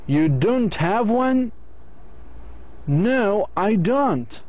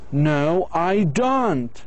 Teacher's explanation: You should show surprise in a negative questions. You show surprise in a negative question if your intonation goes down low and then up high at the end. You don't have one?